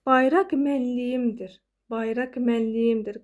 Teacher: Q-dan sonra samit gəlirdisə, bu zaman artıq x kimi səslənir.